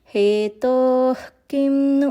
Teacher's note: క కి ముందు విసర్గ వస్తే కనుక హెచ్ సౌండ్ మిక్స్ అవ్వాలండి